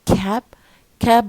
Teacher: it's a stressed word as you see um so it must be aspirated